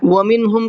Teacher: نون کو ظاہر کر کے پڑھنا ہے، یہاں پر غنہ اخفا کچھ بھی نہیں کرنا ہے